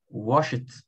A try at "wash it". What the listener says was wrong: Tira esse E, né? Só wash. Força mais no shampoo.